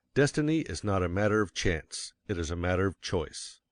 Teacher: of course you will want to emphasize Destiny for it is the principal idea in your declaration and you will put some emphasis on not else your hearers